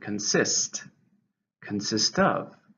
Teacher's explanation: consist has two syllables, stresses on the second.